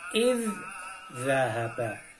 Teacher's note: Zal pertama melebur masuk ke dalam zal yang kedua. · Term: idgham mislain